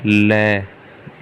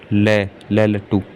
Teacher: ल का उच्चारण करते हैं तो जीभ के बगल से निकल जाती है हवा। ये क्या हो गया, पार्श्विक व्यंजन।